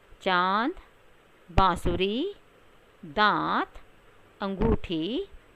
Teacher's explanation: ये देख रहे हैं ना आप, आ के ऊपर एक आधा चंद्रमा की आकृति बनी हुई है और उसके अंदर एक बिंदी लगी हुई है, तो इसे बच्चों अनुनासिक या हम चंद्र बिंदु कहते हैं। इसे बोलते हुए नाक और मुंह दोनों से ध्वनि निकलती है